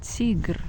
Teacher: Here T is soft, Tigr, because we have I that goes after T.